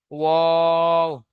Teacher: দুই ঠোট না মিলিয়ে মাঝখান হতে উচ্চারিত হয় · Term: 14 নম্বর মাখরাজ